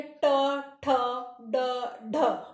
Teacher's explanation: अब आप पहले बोल के देखिए, ट, ठ, ड, ढ। ट, ठ, ड, ढ बोलने पर जीभ जो है थोड़ा ऊपर की तरफ जा रही है। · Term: मूर्धा